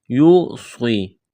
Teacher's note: یا مدہ ہے، الف کے برابر کھینچنا ہے، کاف کو باریک کرنا ہے · یوصی، یا واو پیش یو، واو ساکن سے پہلے پیش ہے، واو مدہ ہے، الف کے برابر کھینچنا ہے، اس قات کو موٹا کرنا ہے، سٹی کی آواز پیدا کرنی ہے۔